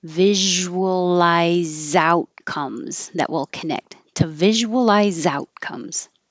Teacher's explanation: The to can change to a t.